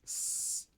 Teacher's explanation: if you make an S sound, S, you don't feel any vibration from your voice.